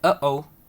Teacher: the glottal stop, which is closing off the airflow in your throat. It happens in English when we say uh-oh, depending on your accent.